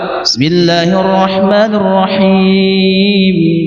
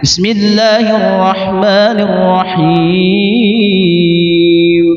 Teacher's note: Di akhir kalimat mad alif disukun itu boleh 3 cara, boleh pakai 2, boleh pakai 4, boleh pakai 6 panjangnya.